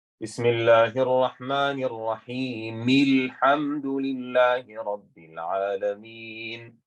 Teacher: So you're applying a kasra on the meme